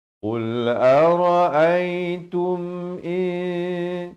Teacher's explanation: Di sini tum ini jangan panjang, sempurna saja tum. Bukan tum, ta baris dhammah bunyi tu, bukan bunyi to